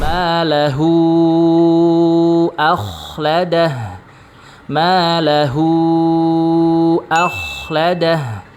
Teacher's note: saat ketika berharakat sukun maka huruf k diucapkan dengan suara yang tebal. Maahu akhladah.